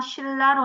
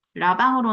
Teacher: 리을과 니은이 만나서 리을, 리을로 바뀐 케이스죠